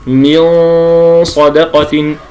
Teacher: النون اصبحت بين الاظهار وبين الادغام فلا انا اقول من صدقه باظهار ولا من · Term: الاخفاء الحقيقي